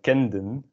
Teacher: kenden makes more sense because the N is voiced and the D is also voiced. If you had kenten, it kind of works, but doesn't sound as good.